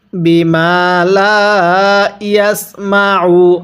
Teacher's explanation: আইনটা পড়ার সময় গলার মধ্যে চাপ দিয়ে পড়ব।